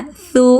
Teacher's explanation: ujung lidah di tepi gigi seri atas